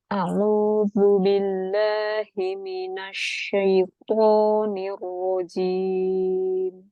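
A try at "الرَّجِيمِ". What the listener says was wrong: Untuk jim ini jangan miring ya. Jadi sempurnakan harokat kasrahnya. Rojim, rojim.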